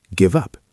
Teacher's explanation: The V sound moves to the U.